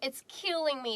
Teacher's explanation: try to emphasize that killing by dragging it out